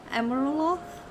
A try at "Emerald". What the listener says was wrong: You're missing an L. Emerald.